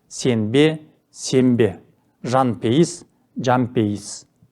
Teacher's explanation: Түбірдің соңғы н дыбысы б, п дыбыстарының алдынан келсе, н дыбысы айтылуда өзгеріп, м дыбысына айналады. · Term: Регрессивті ассимиляция